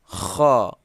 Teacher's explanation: Kha keluarnya tenggorokan atas.